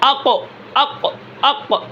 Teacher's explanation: جیسے ہی سانس ختم ہو گیا قاف کے اندر بلندی آ گئی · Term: جہر